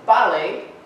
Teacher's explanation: penultimate stress, meaning the first syllable is stressed, two syllables in the word